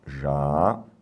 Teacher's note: óbvio que é o U, ele é tônico e está em hiato. Por isso que tem acento.